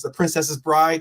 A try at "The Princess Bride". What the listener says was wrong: the Princess Bride. You were saying Princess's Bride. It's the Princess Bride. It's the Princess. Bride. Not Princess. It's the Princess Bride.